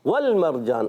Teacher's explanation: آپ نے مرجان پڑھ دیا, ول چھوڑ دیا